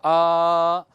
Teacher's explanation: अ ये ह्रस्व है, आ ये दीर्घ है, और इसी को थोड़ा और लंबे समय तक बोलो आ, तो ये प्लुत हो जाएगा